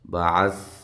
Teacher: سا کو نرم ادا کرنا ہے، ہلانا نہیں ہے، عین کو واضح نکالنا ہے